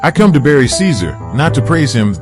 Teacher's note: to praise him this sentence is divided into two tone groups the rising intonation on Caesar adds a dramatic effect emphasizing the contrast between burying and praising